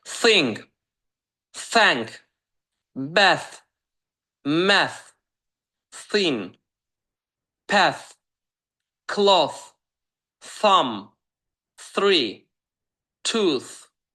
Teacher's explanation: Sırf TH hərf birləşməsi ilə əlaqəli. İndi söz nümunələrinə baxırıq, hardakı pəltəy F olaraq deyəcəyik.